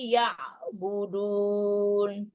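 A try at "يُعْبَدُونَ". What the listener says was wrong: Yu'badun terbalik. Yu'bad.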